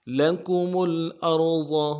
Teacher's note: لکم میں میم کے پیش کو لام کے ساتھ ملائیں گے اگلے، اور ارض میں را کو موٹا کریں گے اور ضاد کو بھی موٹا ادا کریں گے. ضاد کو انتہائی نرمی کے ساتھ اور موٹا ادا کرنا ہے